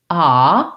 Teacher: when I make the ah vowel, my tongue is all the way down at the bottom.